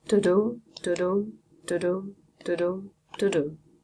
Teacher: there is a sort of alternation between stressed and unstressed syllables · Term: iambic pentameter